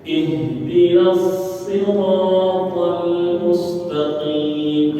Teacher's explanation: Jadi langsung dibaca atau langsung dimasukkan dari na langsung masuk ke dalam huruf shad. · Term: disambung